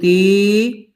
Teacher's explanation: کھڑا زیر کو ایک الف کے برابر کھینچا جائے گا، جیسے ہندی میں بڑی کی ماترا کھینچ کے پڑھا جاتا ہے۔